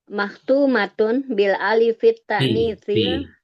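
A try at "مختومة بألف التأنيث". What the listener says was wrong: Bukan bil, bi alifit.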